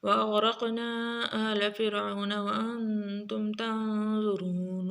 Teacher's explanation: غین را قاف تینوں کو موٹا پڑھیں گے قاف کے اوپر قلقلہ کریں گے.